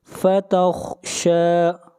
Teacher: فتخشى خا کو موٹا پڑھیں گے، خا حروف مستعلیہ میں سے ہے